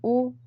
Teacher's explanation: ओठ का की प्रोसेस भी हो रही है। ओ ओठ गोल बन रहा है और गले से भी कंठ से भी आवाज निकल रही है। तो यह कंठ ओष्ठ है।